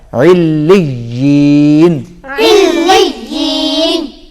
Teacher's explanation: وقف کی حالت میں نون سائلنٹ ہو جائے گا